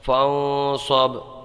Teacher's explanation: یہاں پر نون میں گنہ ہوگا اور با میں قلقلہ ہوگا